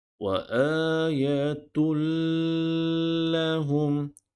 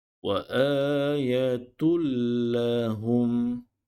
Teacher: Kita hanya perlu memasukkan sebutan atau bunyi huruf ta marbuta kepada huruf lam tanpa ada dengung.